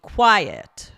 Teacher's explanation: pronounced two syllables with a stress on the first one